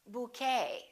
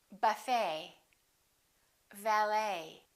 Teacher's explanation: the t is almost always silent so English speakers pronounce it the same way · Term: silent te